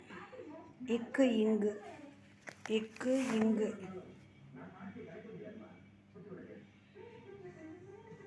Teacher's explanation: நாவின் முதல் பகுதி அன்னத்தின் அடிப்பகுதியை பொருந்துவதால் பிறக்கும் எழுத்து